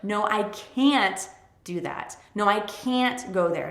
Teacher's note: When you want to say no, I can't, stress can't more than you stress the verb